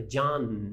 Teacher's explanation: um som nazal em inglês é letra pronunciada Então é John na língua vai lá aqui em cima né no palato duro né no céu da boca